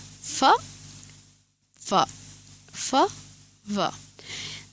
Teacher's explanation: ওপরের দাঁত এবং নিচের ঠোঁট টাচ করছে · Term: লেবিও ডেন্টাল